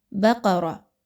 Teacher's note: اب اس میں با باریک پڑھی جائے گی، قاف اور را ان دونوں کو موٹا پڑھا جائے گا۔ قاف آلریڈی موٹا حرف ہے، اس وجہ سے را کے اوپر چونکہ زبر آ گئی ہے تو را کے اوپر کوئی حرکت آ جاتی ہے تو اس را کو باریک نہیں پڑھا جاتا بلکہ موٹا کر کے پڑھتے ہیں۔